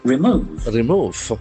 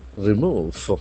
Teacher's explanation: There are two syllables. Accent for the second syllable.